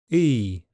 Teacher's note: It commonly starts a bit more centrally and moves to the front. · E is made with the tongue to the front and the jaw close. The lips can be spread or relaxed to achieve the sound E. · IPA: /iː/